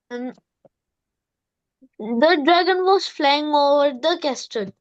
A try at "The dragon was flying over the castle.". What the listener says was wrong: Is it the slow one? Because I felt this is normal. You have to speak slowly first, then normal, and then dramatic.